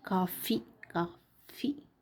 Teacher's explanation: పై దంతాలు కింది పెదవి కలిపితే వస్తుందండి. అందుకే దంతోష్ట్యం అంటారు ఫిరంగిని, కాఫీని. · అంటే దంతముతోను ప్లస్ పెదవి కలిపి పలికేది ఫిరంగి